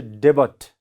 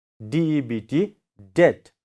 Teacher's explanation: we have to pronounce as det. See, this B sound is silent. So, you should not say debut.